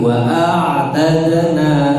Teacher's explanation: ain sukun memiliki sifat namanya tawasud. Tawasud itu dia ada alirannya. Tidak boleh wa'a tapi wa'atadna.